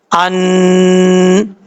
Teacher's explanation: 1 الف کی مقدار غنہ کیا جائے گا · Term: اخفا کا غنہ